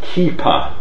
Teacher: the f has turned, in all Neo dialects, has undergone fortition to a pu, so which differs from Toroyu.